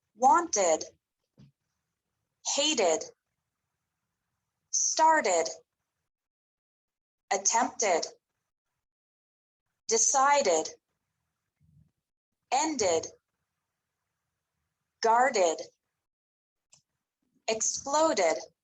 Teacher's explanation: e d is pronounced like ed with an extra syllable after verbs ending in a t or a d sound